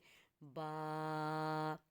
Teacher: دونوں ہونٹ جب آپس میں ملتے ہیں، اس کے گیلے والے حصہ جو تر والا حصہ ہے وہاں سے با